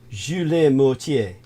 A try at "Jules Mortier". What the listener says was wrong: The T's are usually silent. Like, we don't say the T's so much. Like, They're more H.